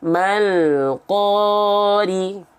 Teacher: 2 harokatnya tetap 2 harokat ya. Jangan jadi kepanjangan, jadi kependekan.